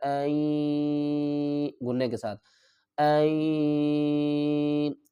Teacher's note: آپ نے ایک بات کا خیال رکھنا ہے کہ جب بھی یا کے اوپر تشدید ہوگی اور اس سے پہلے نون ساکن یا تنوین ہوگا تو وہاں پر غنہ بھی ہوگا اور ادغام بھی ہوگا، یعنی ایک حرف کو دوسرے حرف میں ملا کر پڑھیں گے